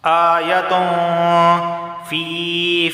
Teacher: ناک سے 1 الف کے برابر آواز آئے گی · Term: اخفا والا غنہ